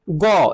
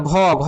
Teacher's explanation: গ এটা অল্পপ্রাণ আর ঘ ঘ হচ্ছে মহাপ্রাণ